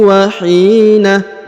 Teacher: huruf hi dipanjangkan 2 harokat karena di depannya terdapat ya sukun atau ya mati